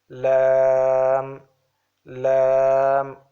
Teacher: from edges of the tongue with the upper teeth